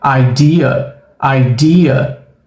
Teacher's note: olha só o som do schwa no final da palavra. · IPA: ə